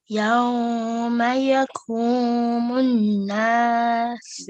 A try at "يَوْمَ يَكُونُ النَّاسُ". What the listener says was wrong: This is a noon, yes. يَكُونُ النَّاسُ.